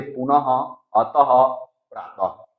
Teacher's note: इसका उच्चारण हम जैसे आधे ह के रूप में कहते हैं। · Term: विसर्ग